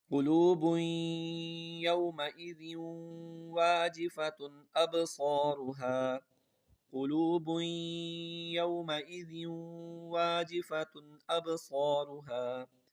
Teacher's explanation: اب اس میں سمجھیں تنوین کے بعد یا آ رہا ہے تو یہاں پر غنہ ہوگا